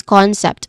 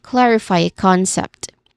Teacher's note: concept, which has 2 syllables. The stress is on the first syllable. We pronounce it as the first syllable is con.